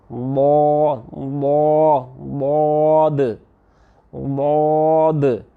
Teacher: زبان کے سارے کنارے اوپر والے ساری دانتوں اور داڑوں سے لگا کے بند کر دیے۔ پھر آپ نے کیا کرنا ہے، زبان کی جڑ پہ سارا فوکس رکھنا ہے، پیچھے سے آواز نکال کے آگے آنا ہے، ضاد ضاد ضاد۔